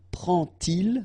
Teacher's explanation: And so this little D here is in red just to show you that you won't pronounce it like D to make the liaison, but you will pronounce it like T. And so you will get prend-il, okay? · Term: D pronounced like T